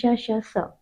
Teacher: महाप्राण है और अघोष है ये